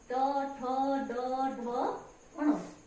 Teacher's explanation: इनका जब हम उच्चारण करके देखें तो हमारी जीभ थोड़ी सी अंदर की तरफ झुकती है। ट, ठ, ड, ढ अर्थात मूर्धा की ओर पर टच करती है, इसलिए ये मूर्धन्य स्वर कहलाते हैं, मूर्धन्य वर्ण कहलाते हैं।